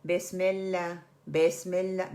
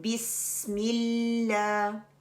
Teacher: सी की विसली साउंड आनी चाहिए। उसको थोड़ा टाइम दें। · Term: सफीर